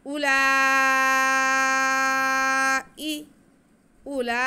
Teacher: ऊ के बाद वाव है, ऊ की आवाज़ को बिल्कुल नहीं खींचना, हमज़ा की आवाज़ को बिल्कुल नहीं खींचना। उलाई, उलाई, काफ पे ज़बर है, काफ का ज़बर पढ़ेंगे, इसको खींचेंगे नहीं।